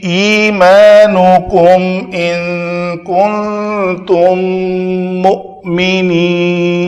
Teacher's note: یہاں پہ اظہار شفوی ہے، اس کو ہم نے نہ ہی 2 حرکت کے برابر ادھر ٹائم دیا، نہ ہی میم کی آواز کو اخفاء کیا